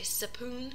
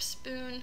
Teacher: epenthesis, where you're adding in an additional sound